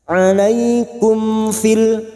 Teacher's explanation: Uraikan dari kata alaikum alaikum Karena sekarang kita wasal di sini mim sukun bertemu Fa Idhar syafawi mim sukun dibaca jelas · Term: idhar safawi